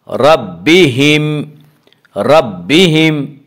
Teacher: میم ساکن کے بعد دوسری میم آ رہی ہے اس لیے اس یہاں پہ ادغام شفوی ہوگا